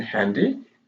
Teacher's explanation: the consonant in handy is a voiceless glottal sound so it's produced in the glottis in the glottal cause it's a total consonant and it's voiceless